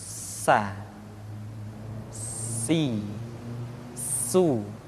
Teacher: Di antara sifat yang menonjol ketika kita mengucapkan huruf sa atau huruf sin adalah sifat as-safir, di mana ketika kita mengucapkan huruf sa ada suara tambahan yang menyerupai dengan suara belalang